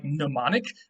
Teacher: today in english we don't like pronouncing m and n at the beginning of a word um and so we just make the m silent but in greek they did not make the m silent they